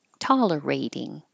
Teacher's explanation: Hold the T. And tolerating. The T changes to a D.